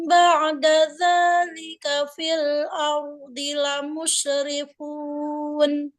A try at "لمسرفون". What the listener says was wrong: Lamus harusnya sin kan? Lamusrifun. Tadi udah jadi shin itu, bukan jadi sin lagi. fa. Itu pindahnya jauh.